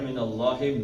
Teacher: زبر کے بعد اللہ آیا تو اللہ کا نام موٹا ہے